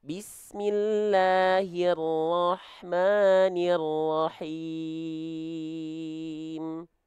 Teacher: ro fathah di sana memang vokal O, tapi nggak boleh monyong. Karena sempurnanya fathah itu membuka mulut.